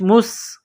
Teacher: اور غی، مستقر، میم کو سین کے ساتھ پلس کرنا ہے، سین میں سیٹی کی آواز پیدا کرنی ہے